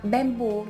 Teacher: bamboo, trọng âm rơi vào âm thứ hai